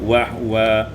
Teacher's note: wa huwa iskanul ha menjadi wahwa